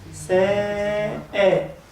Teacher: السين مرققة فلازم الألف ترقق، فنقول ساء.